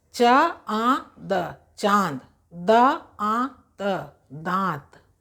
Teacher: तो इसलिए इसका बस दो ही है कि इसका उच्चारण नाक और मुंह से होता है। पहले मुंह से उच्चारण होगा वर्ण का, फिर उसके बाद अनुनासिक का होगा, फिर उसके बाद अगले वर्ण का उच्चारण होगा।